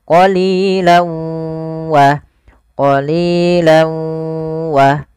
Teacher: masukkan tanwinnya ke huruf waw, awalnya qalilan, karena ketemu waw masuk ke huruf waw, tanwinnya menjadi qalilaw. Jadi ganti w, karena dia huruf waw itu w identiknya. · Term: idgham bi gunnah